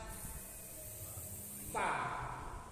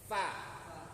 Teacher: Jadi hurufnya waktu kita ngelafazkannya ada anginnya keluar. Itu disebut dengan hamas.